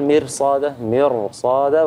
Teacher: بفخم الراء تبعاً لتفخيم الصاد